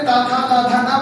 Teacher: ता पे जाके आपका जीभ के दांत तक टच कर दे रहा है।